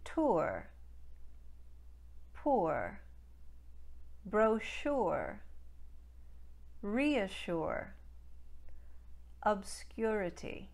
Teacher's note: a lush weightiness to it so you're going to want to avoid any laziness when it comes to lip rounding on the first element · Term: diphthong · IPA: ʊɚ̆